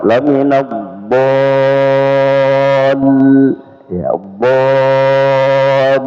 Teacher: mat ketemu dengan lam bertasdid maka dibaca lebih panjang ya, 5 sampai 6 harakat